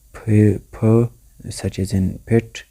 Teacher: Where the construction takes place when we bring the lips together, then the flow of air is stopped, and then we just put them apart and the air is let out, thus producing these sounds p, such as in pit. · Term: bilabials